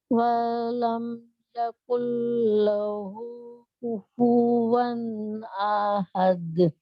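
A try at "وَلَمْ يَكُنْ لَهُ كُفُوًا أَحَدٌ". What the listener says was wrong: اچھا صرف یہ ہے کہ واو کو آپ نے لمبا کر دیا والم میں، والم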